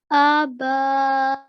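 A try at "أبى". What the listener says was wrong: Now try making the alif a tiny bit longer as well. So it's two counts. Abai. Now the alif has a vertical fatha. Do you know how long the vertical fatha we make? 2 seconds.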